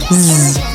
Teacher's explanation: Z is voiced, meaning you make a sound with the vocal cords. Z. To make the sounds, the lips part and the corners pull back a little while the teeth themselves lightly touch.